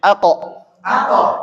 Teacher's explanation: hati-hati bibirnya tidak bergerak Nggih yang bergerak adalah pangkal pangkal lidah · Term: Qalqalah